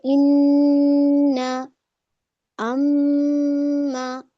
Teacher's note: नून और मीम के अंदर गुन्ना की क्वालिटी पाई जाती है, इसमें गुन्ना पाया जाता है इन 2 लेटर के अंदर, इसीलिए ये खशोम नाक से निकलता है। · भिनभिनाहट हो रही है ना नाक में